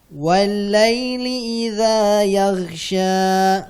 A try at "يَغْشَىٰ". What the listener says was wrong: Untuk ghainnya tambahkan dikit lagi. Yaghsha.